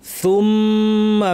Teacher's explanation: দিয়ারিকুম সুম্মা, সা কোথা থেকে, একটু আগে আমরা দেখেছি জিব্বার শীর্ষ থেকে একটু ভিতরের জায়গাটাকে তরফুল লিসান বলা হয়, সেটা উপর পাটির দাঁতের শীর্ষে লাগিয়ে সু আসু সু, সুম্মা মিমের উপর তাসদিদ লম্বা গুন্না